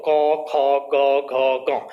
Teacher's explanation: तो क वर्ग के पांचों वर्ण आपके कंठे के अंतर्गत आते हैं, क्योंकि जब इनका उच्चारण हम कर रहे होते हैं तो क, ख, ग, घ, ग, आपको ऐसा जो है ध्यान देना अनुभव होगा कि जो जीभ का जो पिछला हिस्सा है वो गले को टच कर रहा होता है